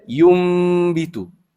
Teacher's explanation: Mesti baca yum bitu. Jadi huruf nun tu hilang. Seolah-olahnya hilang dari sudut bacaan. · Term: iqlab